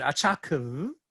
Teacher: she retains a level period of 3-3 and then appends this high rise to the end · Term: tone fusion